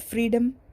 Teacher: The word freedom takes stress on first syllable.